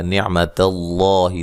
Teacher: لفظ اللہ کو موٹا ادا کریں گے، اس سے پہلے زبر ہے